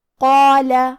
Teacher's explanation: قاف کی ادائیگی زبان کے جڑ اور تالو کے نرم حصے سے ہے. قاف حروف تفخیم میں سے ہے، لہذا ہم یہ حرف کو بھاری آواز میں پڑھیں گے کیونکہ اس کے بعد مد الف ہے. · قاف حروف تفخیم میں سے ہے، لہذا ہم یہ حرف کو بھاری آواز میں پڑھیں گے کیونکہ اس کے بعد مد الف ہے. مد الف اپنے پیچھے والے حرف کا حکم لیتا ہے تفخیم میں اور ترقیق میں، لہذا ہم مد الف کو بھی بھاری آواز میں پڑھیں گے